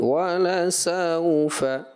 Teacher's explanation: جو سین واو زبر سو ہے، یہ واولین ہے، اس میں نرمی ہوتی ہے، اس کو آپ تھوڑا سا سختی کی طرف لے گئے.